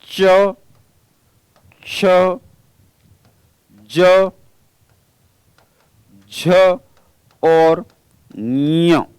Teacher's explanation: चवर्ग, और चवर्ग से तात्पर्य है च, छ, ज, झ और ञ। ये जो 5 वर्ण चवर्ग के हैं, इन पांचों वर्णों का उच्चारण स्थान भी तालु होगा।